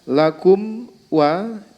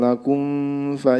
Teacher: ketika mim sukun bertemu dengan wawu atau Fa ini jangan sampai dibaca ikhfa yaitu dengan disamarkan lakumva ini tidak diperbolehkan maka harus dibaca terang